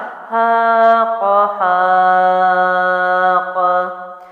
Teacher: یہاں پر الف مد کو 3 الف لمبا کیا کیونکہ قاف جو ہے اس کے بعد والا حرف ہے، ساکن کیا، قاف حروف قلقلہ میں سے بھی ہے، تو جزم لگی تو قاف کو میں نے جنبش دے کے حرکت دے کے پڑھا